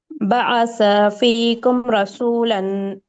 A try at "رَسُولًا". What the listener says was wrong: را کو موٹا کریے.